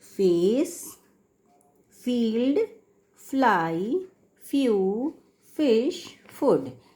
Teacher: English में जब हम फ बोलते हैं तो नीचे का होंठ ऊपर के दांत को टच करता है